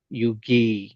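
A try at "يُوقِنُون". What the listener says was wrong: யு வி. யு இ தான் வருது பில. யு இ அல்ல, யு வி வரல. வீட சவுண்ட் வரல. சேர்த்து சொல்ல போல இந்த வீட சவுண்ட் எடுக்கணும். யு வி. யு வி.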